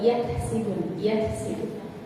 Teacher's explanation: Kaf ini punya sifat hamas, maka kalau kita baca kaf itu agak sedikit keluar